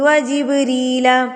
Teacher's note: جبریل پہ قلقلہ ہو رہا ہے، با ساکن ہے